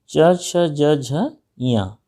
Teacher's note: च, छ, ज, झ, ञ, ये तालु से बोले जाते हैं